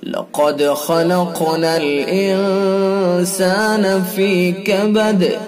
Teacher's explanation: قاف کو پر کریں گے، دال کے اندر قلقلہ کریں گے، خا کو پر کریں گے، قاف کو پر کریں گے اور قاف کے اندر قلقلہ بھی کریں گے۔